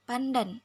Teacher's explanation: bahasa Indonesia dan Jawa diucapkan secara apikoalveolar tetapi dalam kata pandan nasal sebelum bunyi D itu diucapkan secara apikopalatal bunyi n karena karena pengaruh secara regresif dari bunyi letup palatal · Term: asimilasi regresif